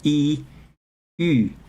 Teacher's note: So if you say E, and you round your lips, Ü